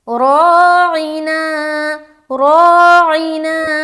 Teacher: रा को मोटा भी करना है क्योंकि रा के ऊपर क्या है ज़बर , मोटा रखते हुए